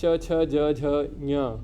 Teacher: All of them, the tongue is touching the upper palate in all these 5 sounds.